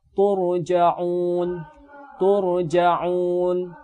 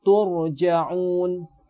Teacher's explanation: Tapi harus diperhatikan bukan huruf ta-nya yang tebal, namun yang tebal itu huruf ra ketika kita matikan